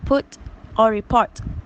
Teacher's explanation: The glottal stop substitute the de-aspirated t sound at the end of words